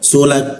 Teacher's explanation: ka siku tenggorokan lidah diturunkan ada hembusan udara